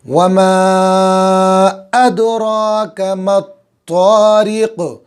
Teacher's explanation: وما پر مد ہے، کھینچیں گے 4 الف کے برابر، حمزہ صاف، را پر، مطا، تو کو میم سے ملائیں گے، اس صورت میں یہ الف اور الف لام نہیں پڑھا جائے گا۔